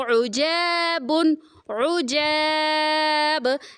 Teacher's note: با جو ہے ساکن کر کے یہاں پہ ہم قلقلہ بھی کریں گے